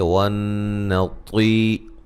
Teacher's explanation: نون مشدد پہ غنہ ہے